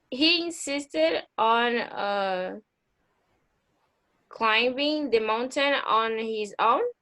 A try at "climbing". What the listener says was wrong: Yeah, but you don't need to pronounce letter B. So it's climb like come. climbing.